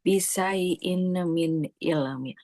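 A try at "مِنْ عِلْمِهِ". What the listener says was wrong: Min ilmi mimnya nggak boleh panjang.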